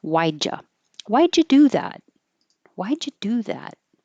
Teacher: the D and the Y make a j